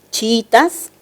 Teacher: la palabra chiítas presenta un hiato simple verdad dos vocales cerradas iguales pero la sílaba tónica es la segunda y eso quiere decir que la palabra se entiende como grave